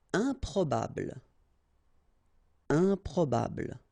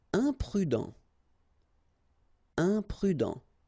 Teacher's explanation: Keep in mind that when you add this em at the beginning of all the words, you will get the nasal sound un. Okay, you don't pronounce the m, but it goes like un